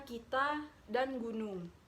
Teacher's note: Konsonan keempat hambat velar yaitu K dan G